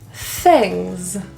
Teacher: For TH, we're going to put our tongue out and blow. This is a voiceless TH.